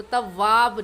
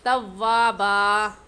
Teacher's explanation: زبر کی تنوین میں وقف کرتے وقت ایک الف پڑھا جاتا ہے، تو تواب نہیں پڑھیں گے بلکہ توابا ایسے پڑھیں گے۔